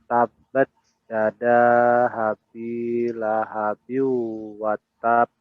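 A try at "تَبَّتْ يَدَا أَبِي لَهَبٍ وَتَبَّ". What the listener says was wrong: Yadanya 4 harokat. Yada. Panjangin lagi.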